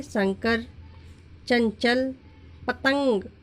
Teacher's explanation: अनुस्वार का उच्चारण करते समय वायु नाक से निकलती है।